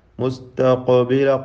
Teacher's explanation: ഖാഫിൻ്റെ സുക്കൂൻ ഖൽഖല നൽകി ശബ്ദം ചലിപ്പിക്കണം